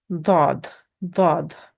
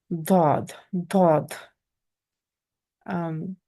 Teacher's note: Touches the side molars, which are the side chewing tooth. You raise the back of your tongue and air is pushed out. You get kind of a reverb. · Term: heavy D sound